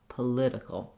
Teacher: Then when we switch to political, we have second syllable stress. So now my letter O no longer says the ah like in politics. Instead, it has a schwa. It's very short and reduced.